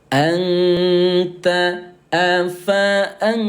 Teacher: Cara bacanya samarkan bunyi nun yang baris mati selama 2 ketukan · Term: ikhfa